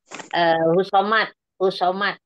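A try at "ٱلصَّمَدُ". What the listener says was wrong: Husomat. Asomad atau Asomad. Enggak ada hu-nya, husomad.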